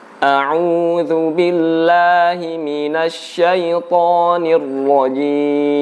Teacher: dalam mengucapkan huruf ain itu kita keluarkan dari tenggorokan, bukan dari mulut, bukan a'udzu billah, tapi a'udzu.